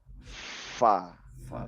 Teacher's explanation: fa ini kombinasi antara gigi dengan bibir. Ya, fa karena menyentuh gigi seri atas ya. Fa. Sehingga menimbulkan kebocoran sedikit angin dan itulah yang disebut dengan hamas ya, kebocoran angin itu disebut dengan hamas.